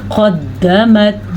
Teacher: یہ ہے موٹا قاف، اور دال کے اوپر شد آنے کی وجہ سے کسی حد تک جھٹکا پیدا ہو رہا ہے، کیونکہ شد کے اندر ساکن بھی ہوتا ہے یعنی کہ جزم بھی ہوتا ہے اور حرکت بھی ہوتی ہے۔